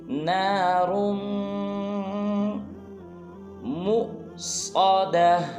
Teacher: जब रा को मीम मुशद्दद के साथ मिलाएंगे तो गुन्ना करेंगे